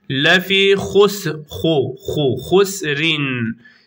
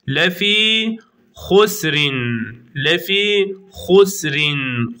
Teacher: lefi uzatıyorsun bir elif miktarı Meddi tabii yapıyoruz